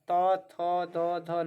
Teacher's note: त थ द ध न देखिए दांत इसमें सट रहे हैं तो ये क्या हो जाएंगे हमारा दंत हो जाएंगे ठीक है